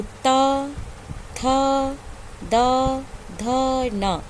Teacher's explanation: इनका उच्चारण स्थान है दंत, क्योंकि जब हम बोलते हैं तो त, थ, द, ध, न, ये हमारी जिह्वा हमारी किससे टकराती है? दांत से टकराती है। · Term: ता वर्ग